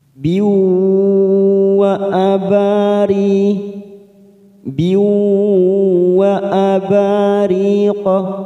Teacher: Kasroh tanwin pada huruf ba bertemu wawu yang bertasdid, namanya idgham bi gunnah. Kita tekan 3 ketuk siap masuk pada huruf wawu. · Biwa abari, biwa abariqa, wa aba fathah diikuti alif 2 harokat, ri kasroh bertemu ya sukun 2 harokat